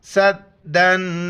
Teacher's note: یہاں پر اخفا کریں گے، ناک میں آواز پیدا کریں گے